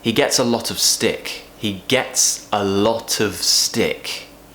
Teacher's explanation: a lot of is kind of almost like one section a lot of we're connecting lot and of lot of of is not being pronounced as off as it's